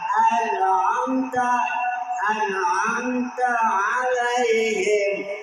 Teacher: Kemudian ain di tengah tenggorokan.